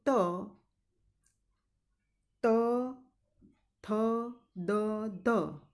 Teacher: આ ઉચ્ચાર કરશો ત્યારે તમારી જીભ દાંત ને અડશે ત થ દ ધ તો એને દંત્ય કહેવામાં આવે છે અને